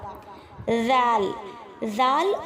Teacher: ذال ذال اور سا کا مخرج ایک ہی ہے۔ زبان کی نوک جب آگے والے اوپر والے دانتوں کے سرے سے ٹکرائے گی تو وہاں سے ذال اور سا ادا ہوگا۔